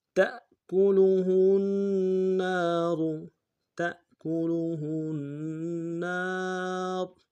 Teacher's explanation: کریں گے، ہا کو النار کی نون کے سامنے لانا ہے، نون کے اوپر تشدید زور دیں گے، نون کے ساتھ الف مدہ ہے، ایک الف دال میں کھینچیں گے